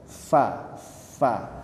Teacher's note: fa Jadi bukan bibir bertemu dengan bibir fa fa lah tapi gigi seri atas ditempelkan ke bibir bawah · Huruf fa cara mengucapkannya yaitu gigi atas, gigi seri atas ditempelkan ke lidah, ke bibir bawah.